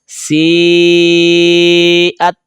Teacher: سین زیریا سی، حمزہ زبر تا ات، سی ات. یہ تا غیر کلکلا ہے، آواز لوٹ کر نہیں آئے گی